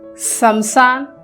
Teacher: हिंदी में श बोलते समय जीभ के नोक यानी जीभ का जो नोक है, नोक को आप लोग क्या करोगे, तालू के पास हमें ले जाना पड़ता है।